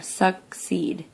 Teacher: The long E sound is in my second syllable.